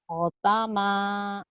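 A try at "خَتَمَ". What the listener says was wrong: kho, bukan go ya. Kho. kayak go.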